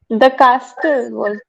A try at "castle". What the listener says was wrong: The castle. It is the castle. It is pronounced as castle. The T is silent. Letters P, T, and K.